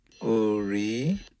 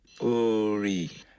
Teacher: This is low followed by rising.